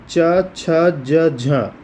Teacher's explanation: च, छ, ज, झ यह तालव्य व्यंजन है